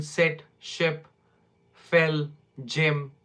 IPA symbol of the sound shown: ɪ